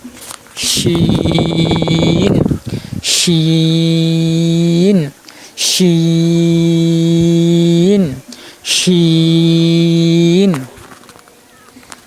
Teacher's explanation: হরফ উচ্চারণ স্থান জিহ্বার মাঝখান ও তার বরাবর উপরে তালুর সাথে লাগিয়ে, জিহ্বার মাঝখান মানে জিহ্বার মধ্যখান, এই দেখে জিহ্বার মধ্যখান, তারপর উপর তালুর সঙ্গে লাগিয়ে জিম শিন ইয়া এই তিনটি হরফ উচ্চারণ হয়। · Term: শিন হরফ